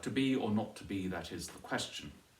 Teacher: A couple of lessons ago we were looking at to be or not to be, that is the question. And the feminine ending, you have there the extra unstressed syllable on the end